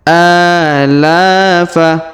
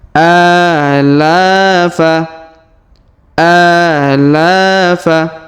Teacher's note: Huruf a kita panjangkan 2 harokat karena alif kecil di atasnya. Huruf la kita panjangkan 2 harokat karena alif di depannya.